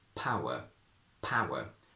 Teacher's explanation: More or less the same happens when we have ow, When we connect u to another vowel sound, we need to put a little intrusive w, which is why in modern RP we say power, power.